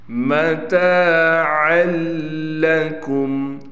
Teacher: اب ہم نے لام پر تشدید دیکھی تو لام ابھی یہ کہہ رہا ہے کہ مجھے عین کو میرے ساتھ ملاؤ۔ جب ہم نے عین کو لام سے ملایا پھر ہم اس الف کو نہیں پڑھیں گے، یہ گر جائے گا یعنی ختم ہو جائے گا۔